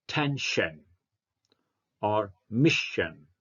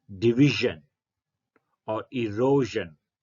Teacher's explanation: the first one is voiceless whereas the second one is voiced